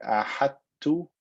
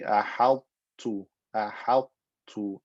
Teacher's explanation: Not complete idgham, but partial idgham. The fatness of the ta or the tafkhim of the ta remains, and then I exit with that skinny ta.